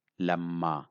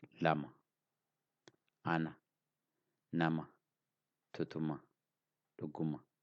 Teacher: Ma is now not Lama, but Lamma. And it is also long, no more short, because I stay on saying Ma